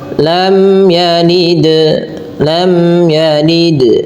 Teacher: Karena apabila ada mim mati bertemu ya, dia termasuk bacaan izhar syafawi yang di mana suara mimnya harus diperjelas bunyinya dan tidak boleh ditahan · Yang dimana suara mimnya harus diperjelas bunyinya dan tidak boleh ditahan. Maka tidak boleh dibaca lam yalid, enggak, tapi jelas saja.